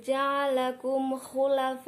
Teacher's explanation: Di sini terdapat mim sukun bertemu dengan huruf kha. Termasuk hukum bacaan idhar syafawi dibaca jelas dan terang.